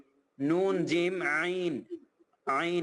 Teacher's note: আইন গলার ভেতর থেকে বলতে হবে